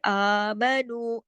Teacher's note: अब देखिए आमनु, आ की आवाज क्यों खींची ऊपर, दो ऊपर खड़ी मद है, आमनु, नू दो हरकत खींचेगा वाव मद्दा की वजह से